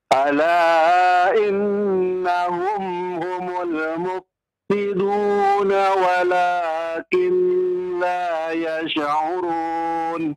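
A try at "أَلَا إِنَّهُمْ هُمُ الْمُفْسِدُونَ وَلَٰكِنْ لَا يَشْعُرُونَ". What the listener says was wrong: Yash'urun. Yash. Ditahan saja. Jangan yash. Kalau yash, berarti Bapak selain menahan juga melepasnya menjadi yash. Ya, ada harokatnya ya. Tapi ditahan saja. Walakin la yash'urun.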